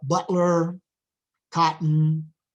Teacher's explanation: So butler, cotton are examples of that pronunciation where we have a glottal stop.